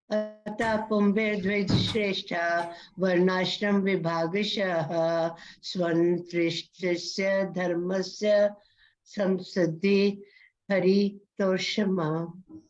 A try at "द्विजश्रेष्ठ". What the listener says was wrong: So when you speak Dvija, so you need to fully pronounce the word Ja. Dvij, you are saying Dvij Shrestha. Dvij Shrestha is giving half sound of Ja. So you need to say Dvija Shrestha. Dvija Shrestha.